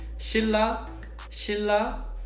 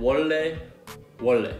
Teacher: when the 니은 and 리을 meet, the 니은 is replaced by 리을. Okay, and then when 리을 is followed by 니은, then it's always replaced with 리을 as well.